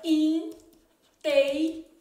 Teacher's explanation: esse n serve apenas para nasalizar a vogal então aqui é um dígrafo a gente chama de dígrafo vocálico